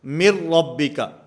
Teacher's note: میم کو را کے ساتھ ملائیں گے، درمیان میں جو نون ساکن ہے یہ ختم ہو جائے گا، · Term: ادغام بلا غنہ